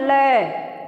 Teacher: ठीक है, अब इसे पार्श्विक क्यों कहा जाता है, देखिए जब हम लय का उच्चारण करते हैं, लय है ना, तो जीभ जो है वो मुड़ के लगती है दांत में। लय हम बोलते हैं तो जीभ जो है वो मुड़ती है और दांत इसे संभाल लेता है। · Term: पार्श्विक व्यंजन